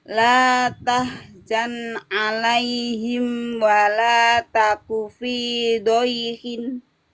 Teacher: La tahzan tidak boleh memantul nun sukunnya.